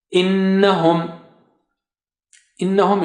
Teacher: Noon is having shadda there. That's why you have to give ghunnah here, or use ghunnah, or say innahum.